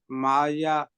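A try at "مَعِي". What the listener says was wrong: यहाँ पे ना माइया नहीं है, माई है। जी या पे अगर शब्द हो तो फिर हम उसको पढ़ेंगे माइया।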